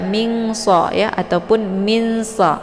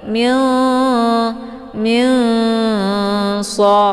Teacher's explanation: sukun bertemu dengan huruf Shad ya ini dinamakan dengan Ikhfa Aad jadi cara bacanya nunnya disamarkan kemudian siap-siap mau masuk ke huruf Shad